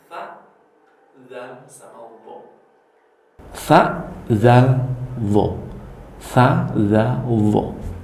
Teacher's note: Nah, tempatnya di mana? Tempatnya yaitu ujung lidah dengan ujung 2 buah gigi yang atas.